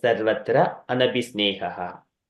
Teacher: I'm just pronouncing visarga because I'm stopping the breath here